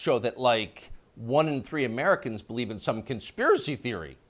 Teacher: You'll notice the upspeak, the rising inflection at the end of the sentence.